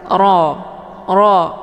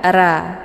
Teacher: ro yang dibaca tebal karena ro ini berharakat fathah cara bacanya posisi pangkal lidah juga ikut terangkat ke langit Ro Ro Jadi bukan ra ya kalau Ra itu tipis bunyinya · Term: tafkhim